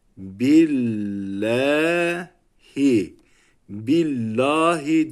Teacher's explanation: Allah isminden önceki harf esreli olursa e sesiyle okunuyor